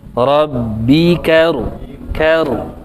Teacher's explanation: ro tasydid itu tekanannya tetap, yang disamarkan itu getarannya, nya, tapi tekanannya tetap Rabbika karu.